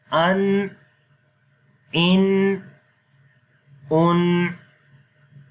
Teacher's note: تو جب ہم ان پڑھتے ہیں تو بالکل ایگزیکٹ جگہ ہمیں پتہ چل جاتی ہے کہ زبان کی نوک سامنے والے تالو پہ لگ رہی ہے جو کہ انیاب اور ثنایا کا تالو ہے